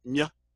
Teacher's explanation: What it's showing with a small J for that here, to show the Y sound. But what you're doing is you're pronouncing the M with your tongue in the Y position. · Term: palatized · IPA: /mj/